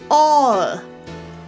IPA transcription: ɔə